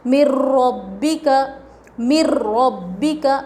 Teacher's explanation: نون نہیں پڑھا جاتا، مر ربی کا ڈائریکٹ میم کو را سے ملائیں گے